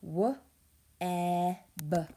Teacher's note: E in web is saying eh, eh. So it's short.